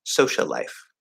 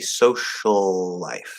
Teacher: it's a very small distinction between just the one L or the slightly longer two L's, but you're lengthening that.